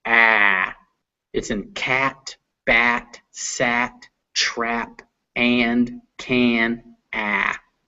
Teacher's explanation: Down here in the front and open, we have ah, ah.